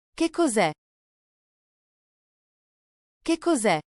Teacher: Keep your intonation rising at the end.